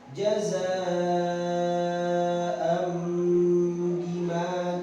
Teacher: Ya, jadi di bawah ada tulisannya apabila nun sukun atau tanwin berhadapan dengan huruf ba maka suara sukun atau tanwin ditukar dengan suara mim dan harus dibaca dengung selama 1 setengah alif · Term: hukum iqlab